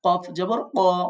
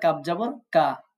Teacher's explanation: কফ কখনো কাফের মত বারিক পড়বেন না